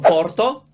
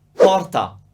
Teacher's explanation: different words that differ only in their final vowel either o or ah